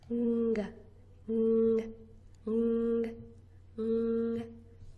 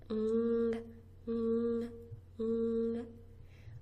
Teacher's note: I'm pushing the very, very back of my tongue up against my throat, up against my palate. The soft palate in the very back of my throat.